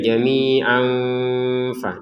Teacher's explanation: Huruf fa. Maka kita pertemukan tanwinnya dengan huruf fa. Kemudian kita samarkan cara bacanya. Jadi jamian dibacanya jamia seperti itu. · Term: dibaca dengan samar